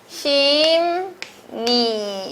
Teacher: 그래서 왕십리로 비음화가 한번 일어납니다. 비음이 아닌 리을이 비음, 니은으로 변했죠